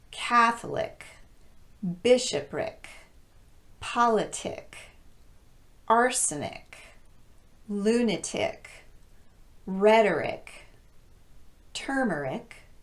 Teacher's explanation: They're all stressed on the first syllable with the exception of the last one.